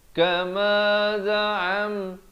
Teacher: izhar syafawi, bunyi saja mim mati, jangan panjang